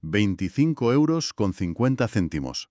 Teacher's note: Ese 25 llega al oído del cliente como un solo bloque fonético, rápido, denso, todo pegado.